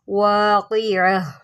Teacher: اگر یہ وقف کی صورت میں آ جائے تو اس کو ہم ہا ساکن سے بدل دیتے ہیں